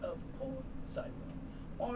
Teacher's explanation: This E is not sounded, so the S moves over